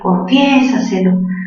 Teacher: Si quieres, confiésaselo todo, confiésaselo. Mayor fuerza, ¿dónde? En la sílaba fie, cerrada, abierta, se une.